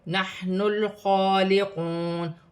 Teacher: خوا پر کھڑی زبر ہے، ایک الف کی مقدار کھینچ کر پڑھا جائے گا۔